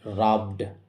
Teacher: ব সাউন্ডের পরে ইডি থাকার জন্য এই ইডি এর উচ্চারণ শুধু ড এর মতো হবে